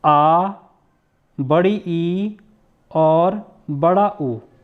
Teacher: जिसमें 2 मात्रा का समय लगता है, ठीक है, उसको हम बोलते हैं दीर्घ स्वर